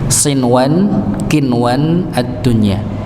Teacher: Kata sinwan kinwan dunya maka tidak didengungkan sama sekali. Walaupun secara kaidah kan kalau ketemu nun sukun ketemu ya idgham bi gunnah kan begitu nggih. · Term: idhar mutlaq